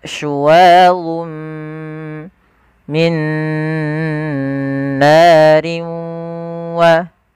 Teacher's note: Idgham naqis, bukan idgham kamil, yaitu idgham yang masih menyisihkan suara bunyi nun sedikit saja.